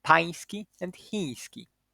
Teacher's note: when a palatal nasal nya is followed by a fricative, then it changes to nasalized ja, which is ja, as in pański and chiński.